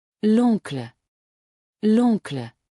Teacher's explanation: The L and uncle are joined because uncle starts with a vowel. That's called elision in French.